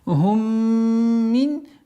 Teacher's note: Здесь у нас правило изхар, четкое произношение нун.